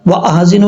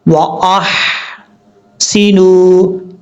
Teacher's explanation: یہ ہا بریک ہے، اس کو کلیئر ساؤنڈ پڑھنا ہے، واحسنوا نہیں پڑھنا، واحسنوا، اس طریقے سے۔